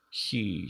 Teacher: That's a little difficult for an English speaker, because for English speakers, actually, we do tend to turn like h into sort of a palatal fricative before a high vowel